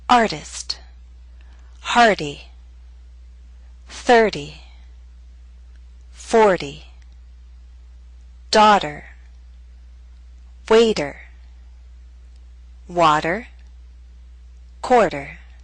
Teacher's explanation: we have the flap T with R as a vowel sound, either before it, after it, or both before and after.